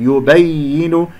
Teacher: كذلك، ليس كذلك، لا تقل صوت الألف، يبين، ياء مشددة فيها نبر، أسمع صوت الياء الساكنة والياء المكسورة